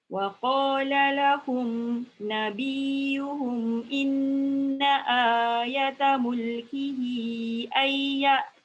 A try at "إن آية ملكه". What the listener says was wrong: Jaga ai. Jangan duduk je. Jangan duduk je. Jangan lalu je. Duduk sekali. Ai ya. Ambil balik ai.